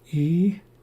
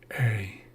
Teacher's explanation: E is a high sound. High front sound. A is a little bit lower. · So a regular I sounds like E, it's a very high sound. A retracted I sounds like A. So E, A. E is a high sound, high front sound. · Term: retracted vowel